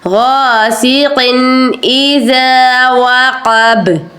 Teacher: یہاں پر آپ نے غنہ نہیں کرنا قاف کے اوپر، قاف دو زین قن کو زیادہ دیر نہیں روکنا کیونکہ آگے حمزہ ہے، تو یہاں پر آپ نے غنہ نہیں کرنا، صرف اظہار کرنا ہے، قن کہہ کے آگے بڑھنا ہے. غاسق اذا وقب ومن شر غاسق اذا وقب.